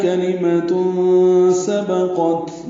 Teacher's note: کلمۃ میں تنوین کے بعد سین آنے کی وجہ سے اخفا ہے